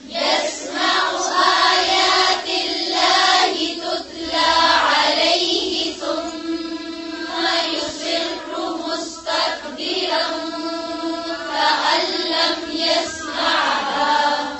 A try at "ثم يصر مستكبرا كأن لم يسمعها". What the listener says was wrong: حركات का ख्याल रखें, लंबा नहीं खींचे. फिर से पढ़ें.